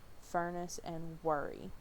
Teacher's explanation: sound and then there's the rock hook reverse Epsilon this is a mid central rounded tense vowel